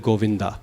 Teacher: We say Govind instead of Govinda. And in Sanskrit, that final a is not optional. It has to be pronounced.